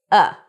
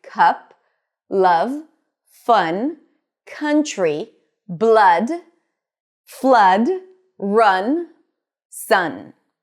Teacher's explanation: the tongue is right there in the middle of the mouth, but it's not rolling forward much or pulling back much. It's not it's not oo, it's The interesting thing about the cup sound is that it's pretty much like a schwa sound. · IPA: /ʌ/